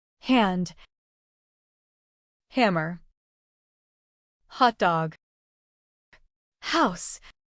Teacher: Unvoiced sound. Place your hand on your throat as you say H and notice there is no vibration. This happens because H is an unvoiced sound.